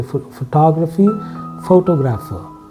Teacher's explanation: You will see the syllable stress slightly moving to grapher.